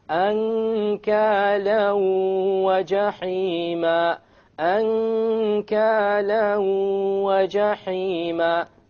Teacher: You merge the tanween along with the waw and you move on. You don't pronounce the end sound and you have a ghunnah.